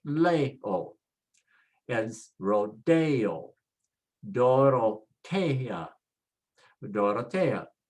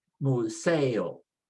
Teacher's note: All of them you see end with a vowel, and so we put the stress on the second to the last